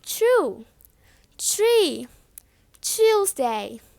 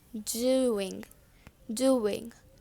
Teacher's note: So tr has ch sound and dr has j sound.